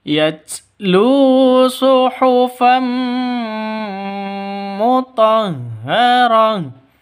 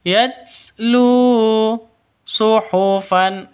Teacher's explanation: Tanwin bertemu dengan mim. Cara bacanya masuk ke mim disertai dengung. Karena idgham bila ghunah. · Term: idgham bighunah